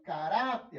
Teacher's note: A sílaba tônica é a penúltima